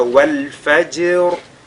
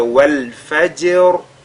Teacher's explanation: Et elle est précédée de la lettre Fa qui porte la Fatha. Donc le Ra ici est lu avec At-Tafrim.